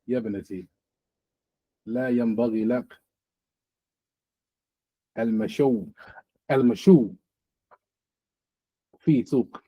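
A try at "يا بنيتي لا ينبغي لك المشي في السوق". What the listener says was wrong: What's at the end of it? It's a ya there. Gonna put a dhamma on it. On the ya. You said mashaw. Like, but it's a ya there.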